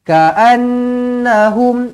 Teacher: Ka'an, jangan ka'an, jangan panjang, tak nak, pendek sahaja. Ka'annahum, nun sabdu wajibul gunnah, dengungkan 2 harakat.